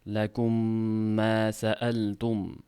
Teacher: Lakum mana shu joyda ikki harakat g'un bilan ushlab turiladi. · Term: idg'om, idg'om mislayn